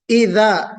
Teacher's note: جہاں سے ثا نکلتا ہے وہیں سے ذال بھی نکلتا ہے، طرف اللسان یعنی زبان کا کنارہ اور دانتوں کا ثنایا کا سرا، تو جب وہاں پہ آپ لگائیں گے تو ذال پڑھیں گے، ذال۔